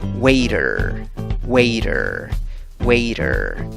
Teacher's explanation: Muchas veces la T en el inglés suena como una R, especialmente si está precedida por una vocal, aunque no es en todos los casos.